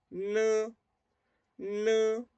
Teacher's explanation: Sin perder la posición de la lengua, saco un sonido nasal.